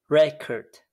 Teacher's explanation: So in English, the vast majority of content words begin with a stressed syllable. In this pattern, trochaic, which is a strong weak stress.